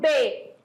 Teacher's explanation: quando eu falo B os lábios se encontram